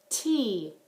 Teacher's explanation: my tongue going right up behind my teeth